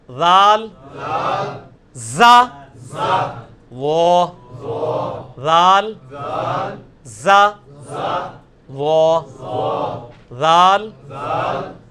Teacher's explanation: یہ سیٹی کی آواز نہیں ذال میں آنی چاہیے, یہ نرمی والا ہے, یہ اس کے نیچے آیا ہوا ہے ذال, نرمی کے ساتھ ذال.